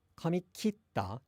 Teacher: If you say kitta, that verb does have a down step at the beginning.